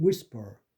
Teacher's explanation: S가 나온 다음에 나오는 피는 약하게 한다